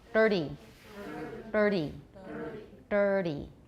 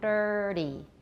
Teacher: So try dirty, but make a retroflex for dir. · If you curl up your tongue, dirty, then that's a flap.